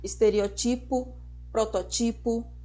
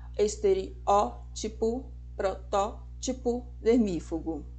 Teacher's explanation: a pronúncia correta é com acentuação na anti penúltima sílaba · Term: proparoxítonas